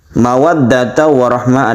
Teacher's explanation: cara membaca idgham bi gunnah yang dia itu merupakan tasydid yang berdengung